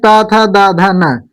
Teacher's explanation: और प वर्ग यानी त थ द ध न जो इसका जो उच्चारण स्थान है वो हमारा दंत है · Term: त वर्ग